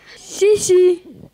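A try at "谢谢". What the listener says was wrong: А давайте теперь правильными тонами.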